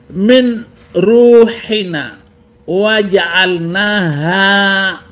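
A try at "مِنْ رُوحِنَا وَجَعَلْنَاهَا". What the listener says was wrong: Itu nun sukun bertemu ro. Dibacanya bukan min, tetapi ro harus dibaca idgham bila gunah, mirru, dan na itu dibaca harus 2 harakat.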